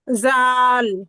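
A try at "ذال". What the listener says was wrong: আরেকটু নরম হবে, হ্যাঁ। জা। জাল।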